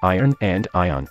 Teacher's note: I pronounce iron and ion identically